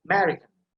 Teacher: Because first A, that is short vowel, so you don't have to pronounce it. So emphasis will be ma sound, so American.